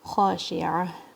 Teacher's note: خا بھی اپر تھروٹ سے آواز آئے گی اس کی